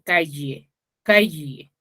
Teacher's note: a nivel fonético, en Lima se dice calle, calle, ¿sí? Con Y.